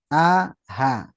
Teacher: yang pertama keluar dari tenggorokan bawah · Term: Hamzah dan H besar